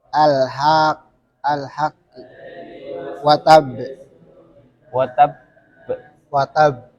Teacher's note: Jadi karena tasid ditahan sedikit watab. Terus qalqalahnya dikeluarkan. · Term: qalqalah tasdid